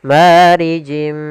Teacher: Kemudian marijim mi sama di sini ada kasratain bertemu dengan huruf mim yaitu idgam bighunah. Kita masukkan lagi tanwinnya ke huruf mim dan ditahan gunahnya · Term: idgham bi gunnah